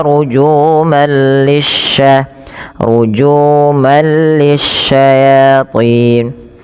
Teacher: Cara membacanya langsung masukkan tanwinnya ke huruf lam yang bertasydid, tapi tidak disertai dengan penahanan karena dia bila gunnah. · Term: idgham bila gunnah